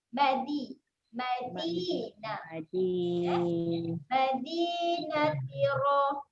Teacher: Okey, seterusnya saya nak fokuskan huruf dal. Okey, huruf dal makhrajnya ujung lidah pergi belakang gigi atas. Jadi huruf dal adalah huruf yang lembut.